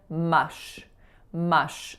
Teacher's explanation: I was saying mush mush so my air was continually coming out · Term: consonant err